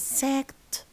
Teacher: Because ka is a voiceless consonant, so the ed is pronounced as ta.